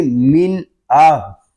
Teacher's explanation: اس میں غنہ نہیں کریں گے، اس کو پڑھیں گے من آہ · نون ساکن کے بعد حروف حلقی میں سے حمزہ آ گیا ہے، اس میں غنہ نہیں کریں گے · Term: اظہار